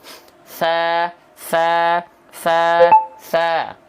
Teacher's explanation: dia keluar mengalir suara rokhwah dan mengalir nafas juga sa sa sa sa ya paham ya nih kalau saya contohkan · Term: hams